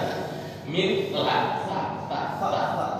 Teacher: Jadi ujung lidah ditempelkan di dinding gigi seri bagian atas.